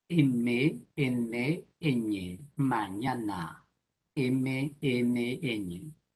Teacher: la cavidad nasal m n ñ mañana m m m bueno en realidad el aire no sale completamente por la nariz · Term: consonantes oro' nasales